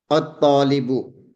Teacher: we are not pronouncing the lam of the al